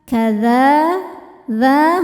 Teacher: Mubin kadzalika kadza dza hukumnya mad thobi'i muqaddar karena huruf dal berharakat fathah panjang. Cara bacanya kita panjangkan dua harakat.